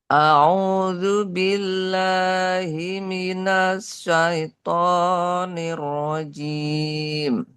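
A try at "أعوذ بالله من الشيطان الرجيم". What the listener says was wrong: Oke, nanya sudah bagus, tinggal sya-nya itu lebih tersebar. Jadi kurang tersebar tadi hembusannya, desisnya seperti huruf seakan-akan tadi terdengar seperti agak sedikit mirip-mirip dengan huruf sa, ya, tapi ini lebih disebarkan. Sa, sya, sya, sya itu desisnya melebar, ya, meluas kemana-mana. Sya berbeda dengan sa.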